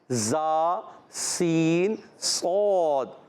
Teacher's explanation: سین کا مخرج ہے زبان کی بالکل باریک نوک اور دونوں دانتوں کے اندرون کنارے، یعنی نیچے والے دانت اور اوپر والے دانت، ان کے جو اندرون کنارے ہوتے ہیں اس سے زا سین صاد، یہ زبان کی بالکل باریک نوک آگے آتی ہے، اس کو زبردستی نہیں لگانے ہوتا، یہ خود ہی لگتی ہے۔ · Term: حروف صفیریہ